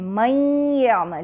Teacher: نون کا مخرج ختم ہو جاتا ہے اور مخرج کو چھوئے بغیر ہم یا ادا کرتے ہیں، من یعمل، لیکن ساتھ ساتھ آواز ہماری ناک سے آ رہی ہے جو کہ اس نون ساکنہ کی وجہ سے ہے، لہٰذا یہاں ادغام ناقص مع الغنہ ہے۔